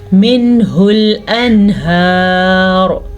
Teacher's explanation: ہم نون ساکن کو ظاہر کر کے پڑھیں گے اور بغیر غنہ کے پڑھیں گے